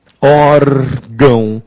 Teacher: A sílaba tônica é o or.